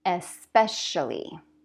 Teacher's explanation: make sure that that CI sounds like a sh